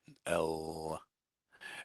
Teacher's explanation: If you say L, a normal L, not a soft one, but just a normal one, you can feel that your tongue kind of goes between your teeth.